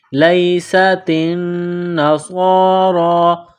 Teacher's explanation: سین میں سیٹی کی آواز پیدا کرنی ہے، سین کو باریک کرنا ہے۔ تا کو باریک کرنا ہے، نون کے ساتھ پلس کرنا ہے، نون مشدد ہے، غنہ کریں گے۔